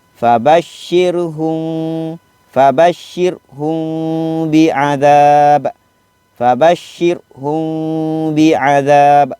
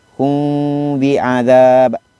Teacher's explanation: Dibaca secara dengung dengan kadar dua harakat. Dengung. Dengung tu dua, kiraan dua. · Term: Ikhfa syafawi